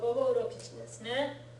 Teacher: Su on the ends of sentences and su before ka. In both those cases, the U sound gets lost.